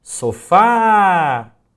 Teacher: Note que a sílaba fá, ela se prolonga, ela se delonga um pouco mais em relação à primeira sílaba. Então o fá é a sílaba tônica.